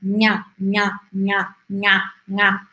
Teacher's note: Se você perceber, você mal mexe a sua língua. Você usa a parte lá de trás da língua para fazer esse som.